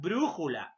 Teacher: La mayor fuerza de voz, antepenúltima sílaba. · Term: esdrújulas